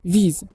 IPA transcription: viz